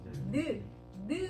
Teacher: 혀 끝이 입 천장하고 그리고 밑 잇몸 근처에 닿죠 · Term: 혀소리